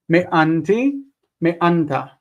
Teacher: Notice that the noon does not assimilate into the ending